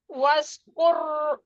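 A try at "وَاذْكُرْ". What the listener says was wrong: Bukan sin. Waz. Zal. Waz. Wazkur.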